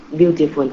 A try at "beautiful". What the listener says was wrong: Beautiful. Đúng rồi, đừng có phun ha. Không có beautiful, nó là beautiful. Like that.